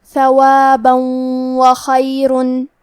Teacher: واو حروف الادغام بغنہ میں سے ہے تو ہم یہ حکم کو غنہ اور تشدید کے ساتھ ادا کریں گے